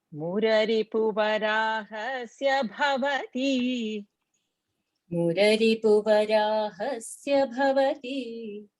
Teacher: So bhavati, we cannot make it dirgha. So to fit in the tune, we say it rasva and then just extend little to fit in the tune, making sure bhavati is not said.